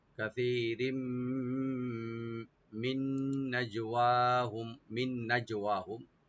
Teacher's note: কাসীরিম, কাসীরিম, কাফ open থাকবে, সাটাকে right দিয়ে একালে টানবেন। রাজে তানভিন আছে, তানভিনের পরে মিম, এখানে ইদগাম উইথ গুন্না হয়ে যাবে। · নুন সাকিনের পরে যেহেতু নুন আছে, ইদগাম উইথ গুন্না।